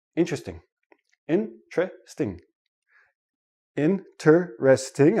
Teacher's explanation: When I actually say it naturally, it becomes 3 syllables, and the T and the R become like a CH, but we'll talk about that next.